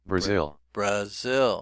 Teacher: Interesting that the zil is stressed, so the second syllable is stressed.